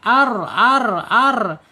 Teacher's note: Dia mempunyai sifat takrir bergetar · ditarik ya lidahnya ke dalam condong. Dicondongkan ke dalam. Jadi getarannya hilang. Arl dia hanya dua saja getarannya tidak banyak-banyak.